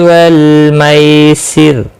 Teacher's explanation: واللام ساکن کو ہلانا نہیں، مائی یا لین ہے، تھوڑا نرمی کے ساتھ کھینچ کر ادا کریں گے · وقف کی صورت میں را ساکن پڑھا جائے گا، باریک